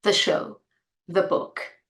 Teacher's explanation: 'The' is pronounced differently before a consonant and a vowel sound. Before a consonant sound, it's pronounced as 'the'. Again, we have the little schwa sound.